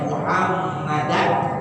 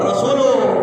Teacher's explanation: Muhammadan tanwin ketemu ain hukumnya izhar. Jelas baca Muhammadan.